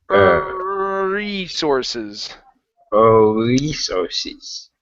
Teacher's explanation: you want to pronounce a good R here so hold the r for longer and move into the E